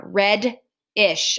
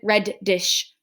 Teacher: to make the um ish be able to stand there okay so i'm still only hearing one d sound red ish i'm not hearing red dish right i'm hearing red